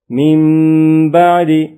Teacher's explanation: number 4 اقلاب نون ساکن یا تنوین کے بعد حرف با آ جائے تو اقلاب ہوگا، یعنی نون ساکن اور تنوین کو میم سے بدل کر اخفا کریں، یعنی غنہ کر کے پڑھیں